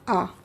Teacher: विवृत का अर्थ ही होता है अधिक खुला हुआ, तो पूरा खुला रहता है। जैसे कि आ के उच्चारण में ही विवृत रहता है हमारा मुंह, अधिक खुला हुआ रहता है हमारा मुंह